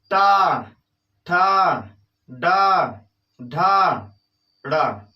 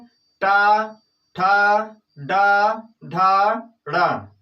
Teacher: टा वर्ग के सभी वर्णों को मूर्धा से बोला जाता है। कह सकते हैं कि टा वर्ग के अंतर्गत जितने भी वर्ण आते हैं उनका उच्चारण स्थान मूर्धा है।